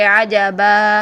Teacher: हम उसको वक्फ की सूरत में एक ज़बर और एक अलीफ के साथ 2 सेकंड तक लंबा करके पढ़ेंगे